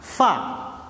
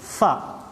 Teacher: Ketika mengucapkan huruf fa, otomatis nafas berhembus, otomatis ada suara desis fa. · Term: hams